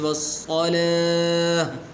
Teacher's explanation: تو یہ تا جو ہے حالت وقف میں ہا بن جاتی ہے